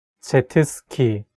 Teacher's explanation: In Korean, as you know, jet should be pronounced as jetu.